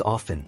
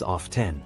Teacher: the T in often is traditionally silent in American English however pronouncing it with the tea has become more acceptable in